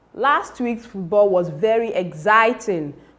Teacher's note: The emphatic stress in that sentence is exciting.